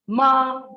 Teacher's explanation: ma is high level pitch, becomes dog